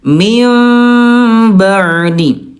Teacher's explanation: bertemu dengan ba berubah jadi mim tapi disertai dengan gunnah dan juga ikhfa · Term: iqlab